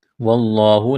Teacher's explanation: لفظ اللہ کے نام سے پہلے زبر ہے، لفظ اللہ کے نام کو موٹا کرنا ہے